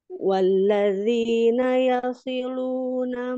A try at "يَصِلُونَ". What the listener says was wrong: Yasilu, yasilu. Tidak tasdid lamnya, tidak yasilu. Yasilu.